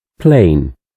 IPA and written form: pleɪn (Plane)